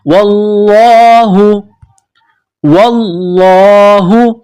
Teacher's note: واللہ, واو کو لام کے ساتھ پلس کرنا ہے, لام میں سختی کرنی ہے. لفظ اللہ کے نام سے پہلے زبر ہے تو لفظ اللہ کے نام کو موٹا کرنا ہے